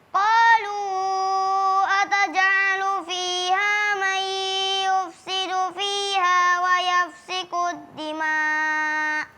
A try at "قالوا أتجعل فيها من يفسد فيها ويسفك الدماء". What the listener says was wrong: Kalimat wa yasfiku, bukan yafsiku. Yasfiku. Tadi keliru antara huruf sin dan fa.